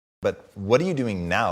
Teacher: the speaker's intonation rises and then falls.